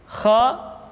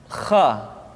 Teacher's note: Kha dikeluarkan dari pangkal tenggorokan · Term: huruf Kha